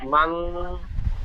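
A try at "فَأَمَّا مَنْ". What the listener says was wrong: মান গুন্না করছে, নুন সাকিনের পরে হামজা এসেছে, খেয়াল করতে হবে। সাকিনের পরে হরফে হালকি 6টি অক্ষরের মধ্যে হামজা এসেছে, নুন সাকিন বিনা গুন্না পড়তে হবে।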